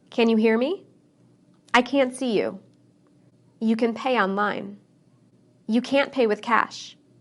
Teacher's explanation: I didn't use the T sound in any of those sentences, and many people don't.